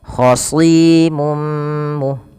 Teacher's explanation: Ya, kemudian khasimum mu, ada mad tabi'i lagi, kasrah bertemu ya, panjangnya 2 harakat untuk si, dan huruf kha dan shad harus ditebalkan karena dia huruf-huruf tebal atau huruf-huruf yang kita kenal pangkal lidahnya terangkat, yaitu isti'la